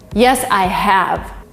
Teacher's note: Yes, I have. Here, have is strong and vivid. It is not weak at all. You have a stress on it. Yes, I have.